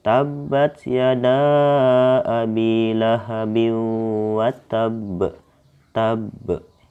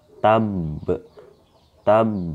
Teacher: ketika tabnya ini sebelum masuk ke b-nya ini teman-teman, huruf b-nya ini, nah kita itu harus tekan sedikit ya, satu ketukan gitu. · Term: qalqalah akbar